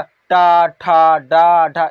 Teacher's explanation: मूर्धा से आवाज निकलती है। मूर्धा से इसका आवाज निकलता है। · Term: टा वर्ग